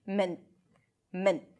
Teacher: You can also pronounce it with a held T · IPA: mən'